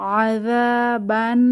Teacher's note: এখানে যালের মাখরাজ খেয়াল রাখবো, জিহবার আগা দাঁতের আগা নরম আওয়াজ। আযাবান নুনের উপরে তাসদীদ ওয়াজিব গুন্নাহ হবে, একটু ধরে রাখবো।